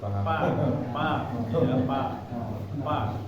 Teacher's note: ketika orang Sunda mengucapkan Fa itu bibirnya ditutup